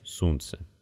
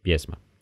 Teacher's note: для ударных гласных есть четыре варианта долгий восходящий глава короткий восходящий вода долгий нисходящий сунце и короткий нисходящий песма